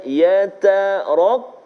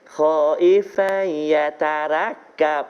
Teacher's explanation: Ra yang baris atas, fathah tebal, tafkhim.